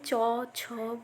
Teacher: তালব্য অর্থাৎ তালুর দ্বারা উচ্চারিত হয়। অর্থাৎ এই যে চ, ছ, বর্গীয় চ, ছ, ইয় এই বর্ণগুলো যখন আমরা উচ্চারিত উচ্চারণ করি তখন আমাদের জিহা তালুকে স্পর্শ করে। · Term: তালব্য ব্যঞ্জন